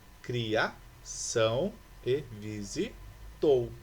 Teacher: Essas duas palavras são oxítonas, pois as sílabas tônicas estão na última sílaba